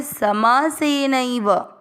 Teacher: समासेनैव समासेन धन एव ये दो शब्दों में विभक्त होगा। न में अ की मात्रा और ए अ और ए मिलकर ऐ बन गया, इसलिए यहाँ पे समासेनैव बना